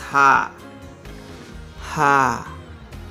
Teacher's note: Ha is such a kind of sound, there is no friction in the mouth. Just like ah, this ah comes very easily.